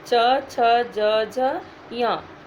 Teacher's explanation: आप देखिए, जीभ हमारे तालु को स्पर्श करती है। मुंह के ऊपर वाला भाग जो होता है उसको तालु बोलते हैं। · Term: चवर्ग